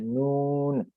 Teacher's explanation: جس طرح سے نون کی ادائیگی کیا ہے، آپ ناک کے اندر غنا کرتے ہیں